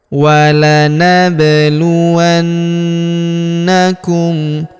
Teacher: Huruf na berharakat tasdid kita tahan dan kita tekan serta kita dengungkan dua sampai 3 harakat.